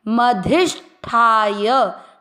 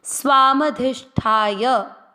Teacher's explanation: कैसे? मधिष्ठाय, ठा को दीर्घ करना है और य का उच्चारण पूरा करने के लिए उसमें अ का उच्चारण मिक्स होगा